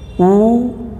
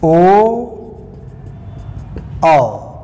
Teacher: इनके कहने पर देखिए होठ थोड़ा गोल हो जाता है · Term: वर्तुल स्वर